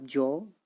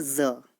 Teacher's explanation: जैसे बिना नुक्ते के बोलेंगे आप जौ, और नुक्ते के साथ थोड़ा सा अपनी जो जीभ है उसे स्लाइड करते हुए आप बोलेंगे ज